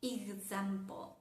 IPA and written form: ɪɡzæmpəl (example)